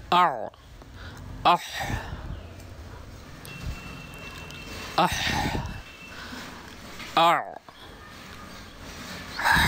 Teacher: তৃতীয় মাখরাজতে হলক বা কণ্ঠনালীর মধ্যভাগ থেকে উচ্চারিত হয় কোন দুইটা অক্ষর হা এবং আইন